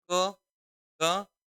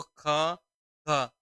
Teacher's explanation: अब देखो ख ख, ज्यादा ताकत लग रही है, ये महाप्राण होगा